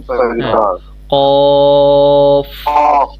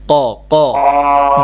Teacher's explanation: জিহবার গোড়া তার বরাবর উপরের তালুর সঙ্গে লাগাইয়া একটি হরফ উচ্চারিত হয়েছে